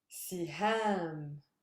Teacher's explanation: the last syllable is a super heavy one that's where my stress lies